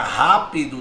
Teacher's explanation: A sílaba tônica é a antepenúltima. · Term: proparoxítona